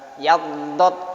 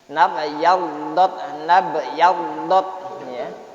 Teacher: dot itu termasuk huruf tafkhim, huruf yang harus dibaca tebal